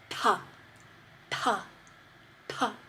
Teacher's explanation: to the next frontal T sound and again similar to previously it's going to be like ta but we're going to put an extra bit of air in it it's aspirated